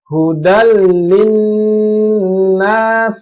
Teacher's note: jadi dia melebur ke huruf lam